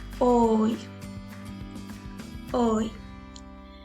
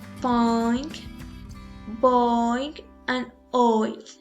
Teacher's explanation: In this sound we go from rounded to not rounded lips, starting at O and ends and E.